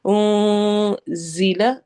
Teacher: زا کو سختی سے پڑھنا ہے، سیٹی والے حروف میں سے ہے